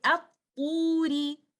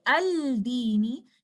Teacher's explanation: You will not hear anything from letter lam. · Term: Idgham Ash-Shamsi